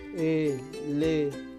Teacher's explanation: Tenemos 3 sílabas átonas y tenemos una sílaba tónica que viene a ser fan. Por lo tanto, el acento está en la sílaba fan.